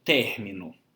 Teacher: que tem como sílaba tônica não a última, não a penúltima, mas a antepenúltima sílaba. Então, nós temos uma sílaba tônica e 2 sílabas átonas. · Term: proparoxítona